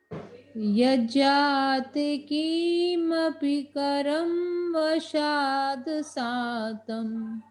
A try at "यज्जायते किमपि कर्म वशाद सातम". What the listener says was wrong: आप पहले शब्द में य को छोड़ रहे हैं, यह जाते नहीं, यह जायते।